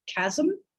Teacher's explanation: There's no vowel in that second syllable. There's just a peak, because what you've got is a really resonant consonant at the end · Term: syllabic consonants